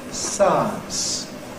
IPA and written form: ˈsaəns (science)